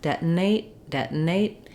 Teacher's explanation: N, deton, deton. And then I glide right out of the N into my A diphthong, detonate. And here with the final T, I can say it, detonate, and let the air out, or I can use another unreleased T, detonate.